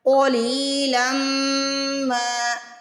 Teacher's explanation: قاف کو موٹا پڑھنا ہے، لام کو کھینچ کے ادا کرنا ہے کیونکہ زیر کے بعد یا ساکن آ رہی ہے یعنی یا مدہ آ رہا ہے. قلیلا ما، لم یہ غنہ کرنا ہے، پھر ما الف کی وجہ سے کھینچنا ہے.